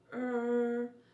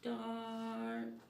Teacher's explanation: it's low open mouth ah this sound can be found in the middle of star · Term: our control sounds